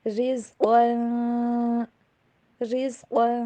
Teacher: را کے نیچے زیر ہے آگے رزقن میں، تو یہاں پہ را کو باریک پڑھیں گے